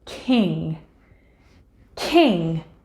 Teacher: lifting up the back of your tongue to press against the soft palate or top of the back of your mouth as you do this the soft palate actually also drops allowing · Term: eng sound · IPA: /ŋ/